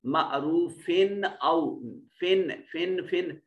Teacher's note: فا کے تنوین میں جو نون پیدا ہو رہا ہے اس کو ظاہر کر کے پڑھیں گے کیونکہ حمزہ حروف اظہار میں سے ہے۔